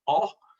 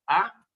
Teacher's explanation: it's pronounced in an Ashkenazi pronunciation, it's pronounced oh, and in a Sephardic pronunciation, it's pronounced ah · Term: kamatz